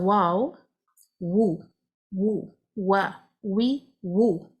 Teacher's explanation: naturally the tongue will be raised slightly from the back